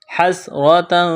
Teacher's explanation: حَسْرَةً اخفا کریں گے، تنوین کے بعد فا ہے